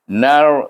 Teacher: Idgham samsi, huruf nun kita idghamkan kepada huruf ra sebab ada alif lam samsiah di sini